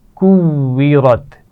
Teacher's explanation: واو کے لیے دانتوں کا استعمال نہیں ہوگا، آپ واو کا مخرج جانتے ہیں، ہونٹوں کو گول کرتے ہوئے ادا کیا جاتا ہے، لیکن واو پر شد ہے تو ہم اس کو 2 مرتبہ پڑھیں گے